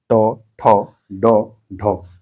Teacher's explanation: ट वर्ग जो है मूर्धन्य में आता है